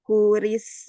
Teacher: huruf sin dialirkan karena ada sifat sofir